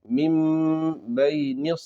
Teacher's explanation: یہاں پر اقلاب ہوگا، میم، نون کو میم سے بدل کر پڑھنا ہے